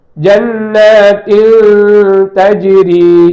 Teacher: இப்ப பாருங்க, தஜ்ரி என்று சேர்க்கப்பட்டிருப்பதால் இதை நாம் எப்படி சொல்ல வேண்டும் என்றால், அதனுடைய மூக்கந்தண்டு ஒலி இருக்கும். இன் என்று மகரஜில் போய் இன்னுன்னு அது ஒலிக்காது. மாறாக அடுத்த எழுத்தாக இருக்கிற தாவிலே நாக்கு இருக்க வேண்டும்.